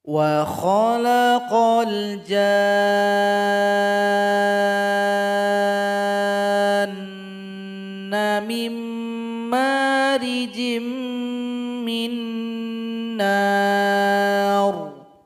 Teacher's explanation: Di sini panjangkan jim 6 ketukan, baru dengungan pada huruf nun 2 ketukan.